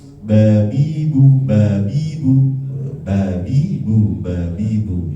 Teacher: tapi orang Arab nggak mengeluarkan nafas